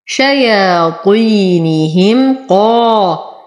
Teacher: شياطينهم قا، أعطي القاف أعلى درجات التفخيم لأنها مفتوحة وبعدها ألف. قا لو، أتم ضمة اللام وبعدها واو ساكنة فهو مد.